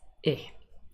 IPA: ɪ